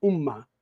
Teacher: esse nasal final, se deslocou e se tornou um ataque, né, silábico da próxima sílaba